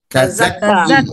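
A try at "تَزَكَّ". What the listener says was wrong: tazakka bukan tazaki. Tazakka.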